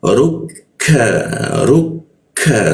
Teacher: huruf ka di sikut tenggorokan lidahnya kita turunkan sehingga membaca ka itu ada hembusan udaranya